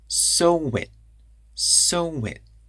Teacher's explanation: Those vowels connect together. So wit. We add a wa in between those sounds.